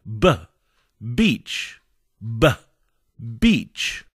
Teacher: And then we push the lips apart again with a puff of air. The B sound is voiced and uses the vocal cords.